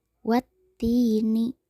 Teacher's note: Kata ti dipanjangkan 2 harokat. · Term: mad tobi'i